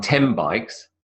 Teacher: So it's more of a m than a n. The n, definitely not.